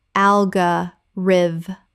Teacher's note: 4 syllables. The stress falls on the first syllable.